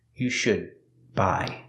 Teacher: The D in should is a stop D, because it's before a consonant.